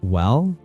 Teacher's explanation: A rising tone, well, is often a question.